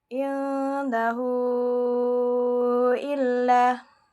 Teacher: di sini terdapat huruf ha dhamir yang bertemu dengan hamzah setelahnya. Maka cara membacanya sepanjang 5 harokat. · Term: mad silah tawilah